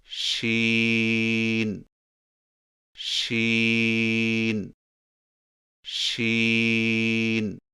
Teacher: شین کی ادائیگی میں زبان کے درمیان کو تالو کی طرف بلند کرتے ہوئے باریک اور پھیلتی ہوئی آواز میں پڑھیں